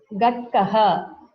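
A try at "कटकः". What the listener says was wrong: No, it's wrong. You are saying kakara as gakara, gadgaha. It is wrong. It is a hard consonant. You are pronouncing it as a soft.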